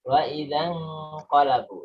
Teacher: Nunnya ikhfa samar masuk ke qaf.